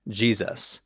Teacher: influence from Germanic languages which makes the S between two vowels sound like a z